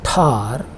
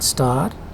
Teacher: When you say it in star, there is no aspiration or there is no puff.